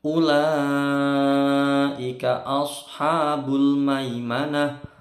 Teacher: lam panjang 5 ketukan. Ini karena panjang ketemu hamzah dalam satu kata disebut mad wajib muttasil.